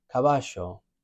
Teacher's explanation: in Argentina and Uruguay, caballo, like a SH in English. So it can sound perfectly correct, they're just different accents.